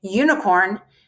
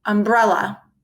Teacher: u makes a long sound you as in unicorn and the short sound uh as in umbrella